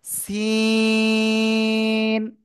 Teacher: জিহ্বার আগা, সামনের নিচের দুই দাঁতের পেট ও আগার সাথে লাগিয়ে।